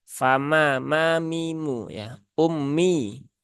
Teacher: huruf mim di sini ya mimnya tipis ya jangan dibuat menebal